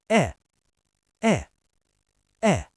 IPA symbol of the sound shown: æ